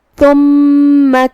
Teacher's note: ہم اسے زبان کے سر اور اوپر والے دانتوں کے اندرونی کناروں سے ادا کریں گے. میم پہ تشدید ہے. 2 حرف کے برابر ہمیں میم کو پڑھنا ہے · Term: حرف الثا